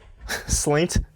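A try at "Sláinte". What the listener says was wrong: No, not It's spelled slaint, but it's pronounced slanche.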